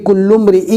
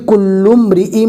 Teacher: کل امرئ، یہاں پر آپ دیکھ سکتے ہیں تنوین کو بالکل صاف ظاہر نہیں کریں گے، کل امرئ نہیں پڑھیں گے، اس کو پڑھیں گے کل امرئ۔ جو تنوین ہے وہ میم کے ساتھ مدغم ہو جائے گی، مل جائے گی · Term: ادغام باگنہ